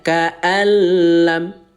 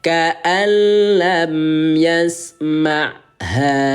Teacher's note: Kita bila gunnahkan. Bila gunnah itu artinya tanpa ditahan. Ya, atau tanpa didengungkan. Bacanya biasa saja.